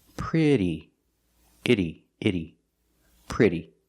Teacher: The double T makes a fast D sound, like in water bottle.